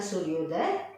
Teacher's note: अ एक ध्वनि है, उ एक ध्वनि, और दोनों ध्वनियों को मिलने से क्या बन रहा है, एक नई ध्वनि बन रही है, ओ बन रही